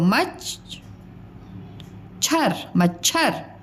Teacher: म च की साउंड कम आ रही है, मतलब उसका उच्चारण में लगने वाला जो समय है वो कम है।